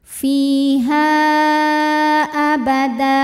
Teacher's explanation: Mad tabi'inya alif didahului fathah pada kata fiha, hamzahnya a pada kata kedua yaitu abada. Maka ha dipanjangkan boleh 4 boleh 5 harokat. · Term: mad jaiz munfasil